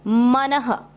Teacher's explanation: मन दोनों अक्षर पूरे, दोनों में अ मिक्स करेंगे मन। न में अ की मात्रा तो विसर्ग को पढ़ेंगे ह